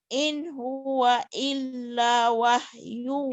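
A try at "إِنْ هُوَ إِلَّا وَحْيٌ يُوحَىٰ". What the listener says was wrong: Illanya panjang. In huwa illa. In huwa illa in huwa illa wahyui yuha.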